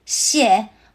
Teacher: Shie uses the fourth tone. It starts high and drops down sharply. Like a firm nod.